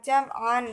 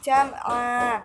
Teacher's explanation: Selanjutnya, jam'a terdapat hukum bacaan mad iwad karena pada huruf ain ada huruf alif yang jatuh sesudah huruf berharokat fathah tain dan terletak di akhir kalimat atau akhir ayat, sehingga cara membacanya bukan jam'an tetapi jam'a, dipanjangkan selama 2 harokat